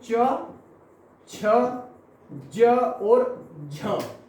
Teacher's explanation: स्पर्श संघर्षी का मतलब ये होता है कि जब आपकी जीभ ऊपर के तालु को स्पर्श करती है, लेकिन जीभ तालु को स्पर्श करने के बाद जो मुख से वायु निकलती है वो संघर्ष करती हुई निकलती है, इसलिए च वर्ग को ही हम स्पर्श संघर्षी वर्ण भी कहते हैं।